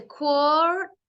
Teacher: and then the ER becomes ah